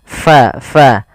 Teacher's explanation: alirkan nafas kita karena fa sifatnya sifat hamus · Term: sifat hamas